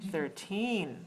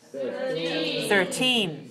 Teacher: stress the second syllable please